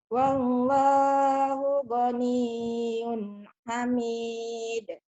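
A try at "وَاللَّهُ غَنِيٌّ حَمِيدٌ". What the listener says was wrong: Masya Allah kalau bacaan udah bagus, indah banget suaramu ya.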